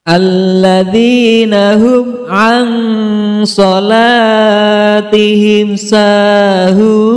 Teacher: Idhar syafawi, karena huruf mim sukun bertemu dengan huruf ain. Cara membaca mimnya adalah jelas. · Cara membaca mimnya adalah jelas. Ikhfa, karena nun sukun bertemu dengan huruf shod. Cara membacanya adalah samar, dengan mendengung